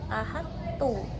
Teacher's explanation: Kecuali huruf to pada lafaz ahadtu ini mempunyai sifat idbaq dan qalqalah, maka sifat qalqalahnya ini menjadi hilang dengan adanya idgham dan harus menetapkan sifat idbaqnya disebabkan keberadaan to itu lebih kuat daripada ta. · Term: idgham mutajanisain